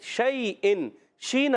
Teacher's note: شین ادا ہوتا ہے زبان کے درمیان تالو کے درمیان